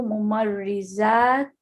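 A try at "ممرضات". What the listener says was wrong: Mumarrizat. Tanween. With a tanween.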